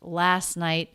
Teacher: then we have a stop t at the end of night